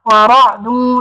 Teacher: because the ra has a fatha on it, not pronounce the ra with an empty mouth. Make that full mouth